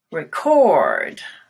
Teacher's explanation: you go up and then you glide down a little bit